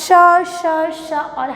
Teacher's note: इसका जब भी हम लोग उच्चारण करते हैं तो ऊष्मा जो ऊष्मा बाहर मुंह से बाहर निकलती है, मतलब रगड़ खा करके बाहर निकलती है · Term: ऊष्म वर्ण